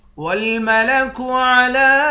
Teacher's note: لام پر کھڑا زبر ہے، کھڑا زبر پر مد ہے، اس مد کو 3 الف کے مقدار کھینچ کر پڑھیں گے